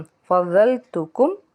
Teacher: दुआद को पुर पढ़ेंगे क्योंकि ये हुरूफ़ मुस्तालिया का हर्फ है और मीम साकिन के बाद आइन है तो यहाँ पे हमने इजहार करना है, गुन्ना नहीं करना।